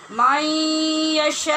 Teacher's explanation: شین کے آگے مد ہے، پھر آگے وقف بھی ہے، لہٰذا اس کو لمبا کر کے پڑھیں گے